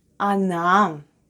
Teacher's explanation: it's unstressed and is pronounced as A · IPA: /ana/